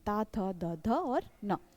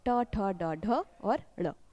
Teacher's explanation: त वर्ग के सभी व्यंजन जो होते हैं वो दंत होते हैं।